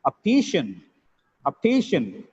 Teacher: The spelling looks like CIAN, but the pronunciation is shun of the last syllable. It has three syllables, optician.